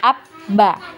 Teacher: di tasdid ya, maka suaranya itu seperti terputus ya